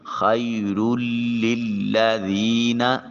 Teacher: والا اجر الآخرۃ خیر للذین، خی یا ساکن ما قبل مفتوح یا لین، نرمی سے ادا کریں گے۔ را کے اوپر تنوین اور اس کے بعد حروف یرملون میں سے لام، تو ادغام بلا غنہ ہوگا۔ اور ادغام تام جسے کہتے ہیں کہ یہاں پچھلے حرف کی جو ہے وہ آواز باقی نہیں رہے گی۔